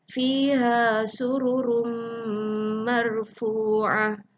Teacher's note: Bunyi tanwin masuk di dalam mim menunjukkan idgham. Dan kalau dia ada dengung, sururum marfu'ah, dia menunjukkan idgham ma'al gunnah.